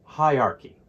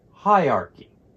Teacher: the AR almost disappears it's a very weak sound and chy sounds like a key together they represent the word